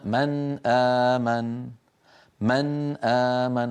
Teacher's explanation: النون من طرف اللسان ان امن الهمزه من اقصى الحلق ما علاقه طرف اللسان باقصى الحلق ما في منهم علاقه لذلك كل القراء باجماع يظهرون النون عند الهمزه فيقولون من امن من امن ولا احد يدغم النون ولا يخفيها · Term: الاظهار